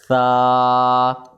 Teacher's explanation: اس کے بعد حروف ثا ہے ہمارے پاس ثا، یہ بھی ایک الف جتنا کھینچ کر پڑھا جائے گا اور یہ حروف لسویہ ہے، زبان کا سرا اور اوپر کے دانتوں کے اندرونی کنارے سے ادا ہوتا ہے